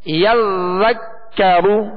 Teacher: را پر پیش ہے تو را کو پر پڑھیں گے